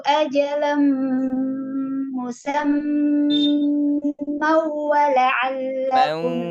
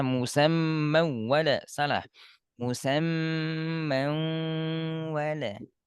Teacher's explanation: mau sengau dua harokat dengung. Bukan seperti tasydid biasa. Kalau tasydid biasa musamman wala salah.